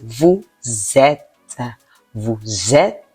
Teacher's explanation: The previous word ends in a consonant, and the next word ends in a vowel. Then that S gives a Z sound when you pronounce it together. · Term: liaison